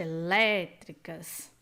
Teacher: então ambas são proparoxítonas exatamente ambas proparoxítonas temos outro valor 300 a vogal tônica em elétricos é aberta